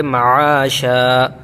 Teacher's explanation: معاشا میں عین نکالیں گے، حمزہ نہیں پڑھیں گے